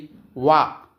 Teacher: దంతోయములు అంటే దంతము మరియు పెదవల నుండి పుట్టినవి అని అర్థం ఇది వ ఈ విధంగా మన వర్ణోత్పత్తి స్థానాలను తెలుసుకోవచ్చు. దీని